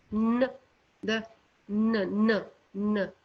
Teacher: The blade, n, not tip of the tongue. The blade of the tongue touches the ridge, alveolar ridge. Ridge means, the hard part of the behind the teeth, the hard part of your mouth behind the teeth.